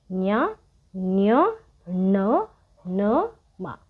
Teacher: ಅನು ನಾಸಿಕ ಅಂದ್ರೆ ನಾವು ಮೂಗಿನಿಂದ ಹೇಳೋದು.